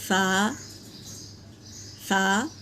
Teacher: नीचे के दांत और ऊपर के दांत के बीच में हमारी ज़बान की टिप्स डालेंगे और किनारे से ऊपर के दांतों के किनारे से लगाएंगे तो सा अदा होता है